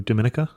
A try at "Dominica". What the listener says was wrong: Yeah, Dominica. It's the accent on the other syllable.